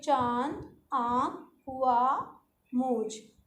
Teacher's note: अनुनासिक को बोलते समय नाक और मुंह दोनों का बराबर प्रयोग करते हैं